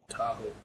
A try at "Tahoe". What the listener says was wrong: Not Taco, it's Tahoe.